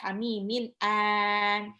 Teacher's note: Hamimin matobi'i, mimnya 2 harokat, hamimin an. Nah, ini tanwin ketemu alif itu tidak di gunnah, jadi dia masih jelas